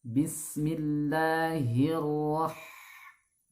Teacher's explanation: Huruf H itu makhrajnya adalah di tengah tenggorokan. Satu makhraj dengan huruf Ain.